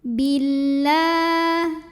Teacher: Dari bi langsung dimasukkan atau diidghamkan ke lam berikutnya. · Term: alif lam syamsiyah